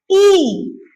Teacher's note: आप लोग जब ई बोलेंगे तो आपके जीभ का भाग जाके आपके तालु को टच करता है। ठीक है, ई बोल के आप देखिए, ई टच हो रहा पीछे, हो रहा ना?